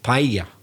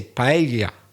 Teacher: they almost make it a bit more like a single L but not quite it's it's somewhere it's not single it's not yeah it's someone